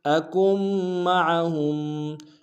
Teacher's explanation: اکم میں کاف کو میم کے سامنے لانا ہے، میم کے اوپر تشدید زور دیں گے اور عین کو کھڑائی سے ادا کریں گے